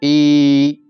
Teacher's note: ઈ તાળવા માંથી નીકળે તાલવ્ય